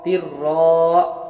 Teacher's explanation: تارا دے تر، را دو، را زبر را، را علی زبر را، تر را. یہاں پر تر را میں ادغام بلا غنہ ہوا، بغیر غنہ کے پڑھیں گے